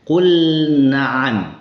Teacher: tempat keluar lam dan tempat keluar nun itu hampir sama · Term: mutajanisain